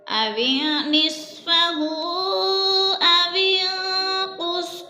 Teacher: اوین پہ اخفا ہو رہا ہے، نون ساکن کے بعد قوف حروف اخفا میں سے ہے تو غنہ کریں گے، ناک میں آواز لے جائیں گے۔